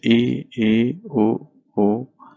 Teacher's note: एक है आपका संवृत्त, वे स्वर जिनके उच्चारण में मुंह बहुत कम खुलता है